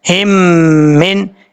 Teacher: اب یہاں پر ہا کے بعد میم ہے، ایک میم ساکن ہے دوسری میم مشدد ہے. ہم نے میم ساکن کو نہیں پڑھنا، ہا کو کنیکٹ کرنا ہے میم مشدد کے ساتھ. ہا میم زیر ہم، میم نون زیر من، ہم من، اس طریقے سے پڑھنا ہے. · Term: ادغام مثلین